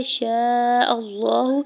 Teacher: شین کے اوپر زبر ساتھ الف اٹیچ ہے، اس کے اوپر مد متصل ہے، 4 سے 5 حرکت کھینچ کے ادا کریں گے ، حمزہ کے زبر کو لام جلالہ کے ساتھ ملاتے ہوئے